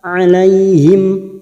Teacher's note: mim sukun bertemu Nun Idhar syafawi dibaca jelas